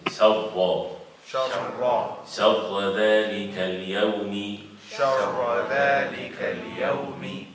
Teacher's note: Shin is light, the ra is heavy.